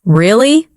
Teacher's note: Say softly, Really? with rising tone.